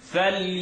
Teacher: it's going to be heavy because nun sukun is followed by a heavy letter that's not in the throat. Fal I'm not pressing it, but it's floating. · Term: heavy ikhfa